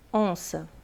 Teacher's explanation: esse n ele vai nasalizar o o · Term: dígrafo vocálico